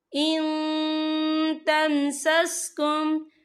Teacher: इन्नल्लाह अलीमुम बिज़ातिस सुदूर इन तमसस्कुम, यहाँ देखिए इन, यहाँ नून साकिन है, नून साकिन के बाद जो है ता आ रहा है और ता जो है इक्फा का वर्ड है, तो हम यहाँ इक्फा करेंगे, नून साकिन की आवाज़ को नाक में छुपाएंगे